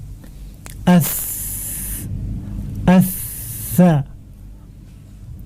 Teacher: Makhrajnya ujung lidah ke ujung gigi seri atas, bukan ke pangkalnya yang dekat dengan gusi, bukan, tapi ke ujungnya. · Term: huruf sa